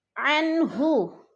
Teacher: نہو پہ پھر وہ مدہ ہے، عنہو، عن پہ اظہار ہو رہا ہے، نون ساکن کے بعد ہا حروف ہلکی میں سے آ گیا ہے تو ادھر اظہار ہے، لفظ کو ہم نے ظاہر کر کے پڑھنا ہے، چھپانا نہیں ہے۔